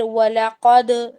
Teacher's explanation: تو یہ لمبا نہیں ہوگا. پھر وَلَقَدْ دال پر قلقلہ ہے